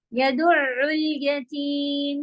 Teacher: يدع میں عین کی آواز کنٹینیو رکھنا ہے